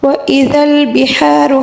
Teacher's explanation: ہا کو حلق کے درمیانی حصے سے ادا کیا جائے گا اور را کو پر پڑھیں گے، ٹھیک ہے؟